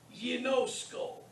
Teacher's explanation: Notice the gamma followed by the iota is pronounced ye. It's soft.